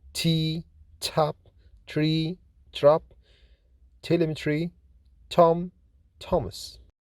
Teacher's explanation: T is voiceless, fortis, alveolar, plosive consonant